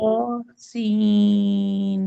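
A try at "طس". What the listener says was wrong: तो को ज्यादा नहीं खींचेंगी, सिर्फ 2 काउंट्स खींचेंगी।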